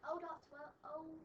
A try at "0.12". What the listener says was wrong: It's not O. Say 0.